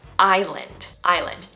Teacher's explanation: Most people will say the S in this word when really it's silent